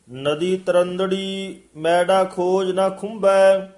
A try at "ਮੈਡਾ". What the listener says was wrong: ਹਾਂਜੀ, ਮੈਡਾ ਥੋੜਾ ਜਿਹਾ ਕਸ ਕੇ ਬੋਲਣਾ ਹੈ। ਨਦੀ ਤਰੰਦੜੀ ਇੱਥੇ ਠਮਕ ਹੈ। ਨਦੀ ਤਰੰਦੜੀ ਮੈਡਾ ਖੋਜ ਨਾ ਖੁੰਬੈ।